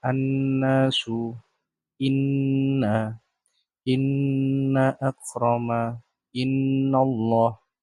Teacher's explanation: Gunnah di dalam surat Al-Hujurat ayat 13 ditandai dengan warna merah, yaitu apabila ada nun tasjid dan mim tasjid. Dibacanya dengan cara dengung 2 harokat